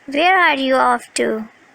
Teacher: Intonation would fall here, since this is an information question, not a yes or no question.